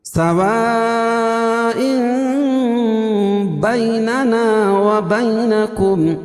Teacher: اور ام بیننا، سوا یہ حمزہ ایک ہی کلمہ ہے اور جب اس کو آگے ملائیں گے تو یہاں اقلاب ہوگا، کیوں؟ اس لیے کہ تنوین کے بعد با رہی ہے تو یہاں اقلاب کر کے پڑھیں گے۔ سواء بیننا وبینکم، بیننا یا لین یا ساکن سے پہلے باقی پر زبر، ننا الف مدہ، وبینکم یہاں بھی یا لین۔